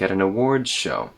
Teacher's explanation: So here in at, there's a tapped T. And the vowel in at gets reduced to a very light at an awards show.